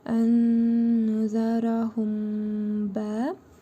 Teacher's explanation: cəzmli mim hərfini burnumuzda tələffüz edərək bir əlif miqdarı uzadırıq və bə hərfinə birləşdirərək oxuyuruq